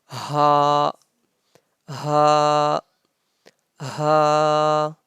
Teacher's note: The sound of ha comes out from the bottom of our throat.